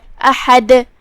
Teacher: کلمت احد میں یہاں حمزۃ قطع ہے. حمزۃ قطع کو ہم ظاہر کریں گے اور اس کی ادائیگی حلق کے نیچے والے حصے سے ہے. حرف الحاء کی ادائیگی حلق کے درمیان والے حصے سے ہے تو ہم اسے وہیں سے پڑھیں گے. · تو یہاں دال کا حکم ہے قلقلہ. قلقلہ کا معنی ہے حرف ساکن کو ہلانا، لہذا ہم دال کو ہلاتے ہوئے یہ کلمہ کو ادا کریں گے